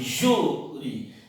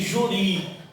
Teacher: Então você não diz juri, você diz júri. Então tem acento na penúltima sílaba. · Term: paroxítona